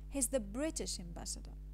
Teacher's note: the tone goes from a very high level to a very low level in the word British so this stone is called high fall tone and it is